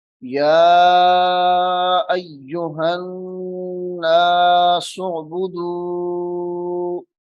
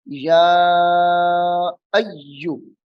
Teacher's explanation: یا کے اوپر کھڑی حرکات یعنی مد اصلی بھی ہے اور مد متصل بھی ہے، یعنی دو الف کے برابر لمبی ہونے والی مد بھی ہے. تو اس کو ہم پڑھیں گے یا ایو.